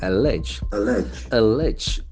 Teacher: Can see the accent again falls on the second syllable.